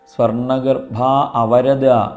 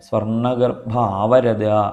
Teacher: മനസ്സുകൊണ്ട് ധരിക്കുക അത് മുറിച്ചു വായിക്കാൻ ഉള്ളതല്ല അപ്പൊ സ്വർണ്ണഗർഭ അവരത അങ്ങനെ വായിക്കരുത് സ്വർണ്ണഗർഭ അവരത എന്ന് ഒന്നിച്ചിട്ട് വായിക്കണം അവിടെ മുറിക്കേണ്ടതില്ല